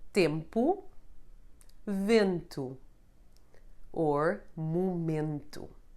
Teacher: The nasal sound [e͂] occurs when the letter E is followed by an -n or an -m